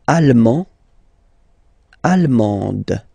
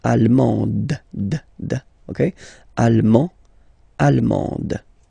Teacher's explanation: you don't pronounce the final D, but then you pronounce it here for the feminine form